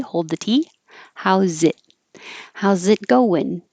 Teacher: The Z will connect to the I, and the T you don't say. Hold the T.